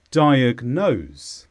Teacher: this is a verb and the stress is on nose diagnose this means to identify a problem for example the doctor